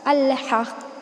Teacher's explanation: الحق قاف حروف قلقلہ میں سے ہے، یہاں پر ہم تشدید کے ساتھ وقف کر رہے ہیں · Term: ہیوی قلقلہ